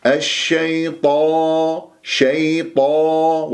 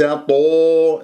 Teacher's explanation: طاء مفخمة مرتبة أولى مفتوحة بعدها ألف طاء، لا تقول الشيطان، لا تكور الشفاه